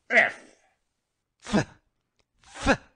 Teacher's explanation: The F by pressing the upper teeth against the lower lip.